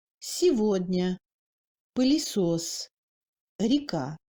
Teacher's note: Après le iode, on entend un i préfermé moins tendu, proche au e quand même.